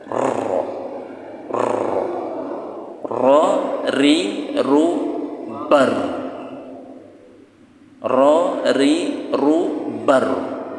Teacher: Torful lisan, ujung lisan agak ke belakang, ke bagian zuhrul lisan namanya, punggung lidah. Tempelkan di langit-langit kemudian bergetar. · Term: huruf ro